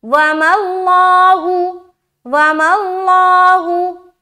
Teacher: لفظ اللہ کا لام موٹا کیونکہ یہاں پر زبر ہے